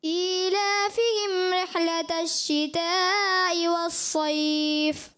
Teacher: بیٹا آپ نے جب آیت پڑھی نا ایلا فہم رحلت الشتاء، تو اس میں ہا کی مجھے لگا کہ ادائیگی میں کمزوری آئی، اور رحلت الشتاء کی جو متصل کی مد ہے اس میں بھی مجھے لگا آپ نے پوری مقدار نہیں کی